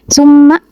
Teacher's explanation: mim bertasyid, dan dia dibacanya tuh ditekan atau didengungkan selama 2 harokat. Jadi summa gitu. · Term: gunah